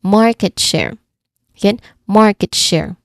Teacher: This is a compound noun with stress on the first part, right? So ensure you pronounce the long A sound in market.